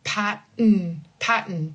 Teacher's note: I'm using that N as the second syllable, basically.